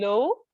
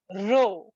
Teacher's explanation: So try saying low and then try saying row. And you will notice that your tongue has gone back a bit from the low to the row. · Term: post-alveolar